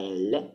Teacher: Fateci se c'è qualche informatico, faccia un Tinder per queste consonanti single, che sono la laterale, quindi la L, laterale, L incomincia, laterale, perché quando dite la L è sonora, ma il suono lo fa passare ai lati della lingua, la L si punta nel postalveolo e voi fate passare il suono dai lati, postalveolo, per intenderci.